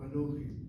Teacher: The emphasis is on the last syllable, Anochi. And consequently, it probably should be with a chataf kamatz.